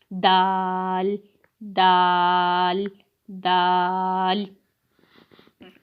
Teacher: دال کا مخرج جو ہے وہ یہ ہے، زبان کی نوک اور اوپر کے دانتوں کی جڑ سے ادا ہوتا ہے